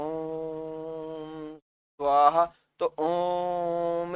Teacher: क्योंकि आप देखो, जब मंत्र में उच्चारण करते हो तो सीधा नहीं बोलते ओम, आप जब हवन वगैरह करते हो तो ओम स्वाहा, तो ओम, इस ध्वनि को आपने लंबा खींच दिया, यानी ह्रस्व से 3 गुना समय ले लिया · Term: प्लुत स्वर